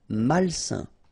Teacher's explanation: A-I-N together, it's a nasal and it's un